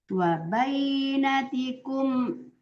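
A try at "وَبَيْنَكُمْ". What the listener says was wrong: Ibu, tidak ada tikum. Wa bainakum.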